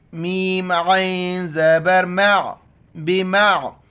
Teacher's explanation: عین کو گلے سے ادا کریں گے